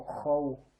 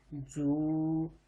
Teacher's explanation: اب دیکھیں پھر زبر آ گیا اور آگے واو آ گیا تو ہم نے لمبا نہیں کیا اس کا